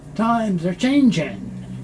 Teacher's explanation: The S moves over, so you hear times are. The R is very soft. And this G, the NG on many words is not pronounced.